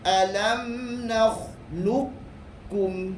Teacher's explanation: Qaf dengan kaf ni dekat, sebelah menyebelah saja dia punya tempat dia. Kalau qaf dekat dengan anak tekak, manakala kaf depan sedikit saja. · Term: idgham mutaqarribain